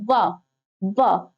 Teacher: व का उच्चारण स्थान क्या होता है, तो व उच्चारित करते टाइम आप देखेंगे व ऊपर वाला, ऊपर वाले जो दांत है नीचे वाले होंठ को स्पर्श करते हैं, इसीलिए इसे दंतोष्ठ कहा जाता है।